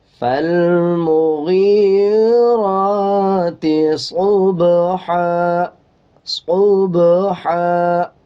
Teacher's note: با کے اوپر جزم ہے، قلقلہ کریں گے